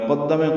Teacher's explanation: قدم قاف دال پہ تشدید ہے، قاف کو دال سے ملا دیں گے، جلدی پڑھیں گے، میم کو بھی.